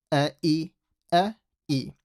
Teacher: A hamza is a very sharp letter that comes out from the bottom of the throat.